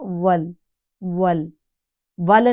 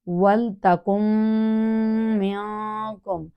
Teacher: حرف لام کو ہم ہلائیں گے نہیں لیکن پڑھنا ہے، کیونکہ ساکن کو ہلاتے نہیں ہیں